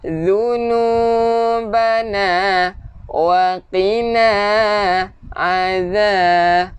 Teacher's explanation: hujung lidah keluarkan sikit untuk zal